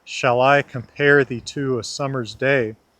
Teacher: We have 10 syllables and they regularly alternate between a drop, an unstressed syllable, and a lift, a stress syllable. We go drop, lift, drop, lift, drop, lift, drop, lift, drop, lift. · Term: amic pentameter